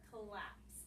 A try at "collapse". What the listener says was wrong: That's the word collapse. That's the word collapse. You have to get your L sound. Collapse. Okay, that's with the C. C-L. But it's actually pronounced collapse. It's not pronounced collapse.